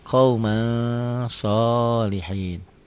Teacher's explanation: Tulisan dan bacaan beda. Ditulisnya ada n-nya, dibacanya n-nya tambah g jadi eng. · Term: ikhfa